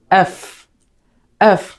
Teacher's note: এফ যখন বলবো তখন উপরের দাঁত নিচের ঠোঁট স্পর্শ করবে। যেমন এফ, এফ, ফা সাউন্ড, এফ।